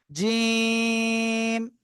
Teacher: শক্ত আওয়াজে উচ্চারণ হবে, জিব্বার মাঝখান তার বরাবর উপরে তালুর সঙ্গে লাগিয়ে।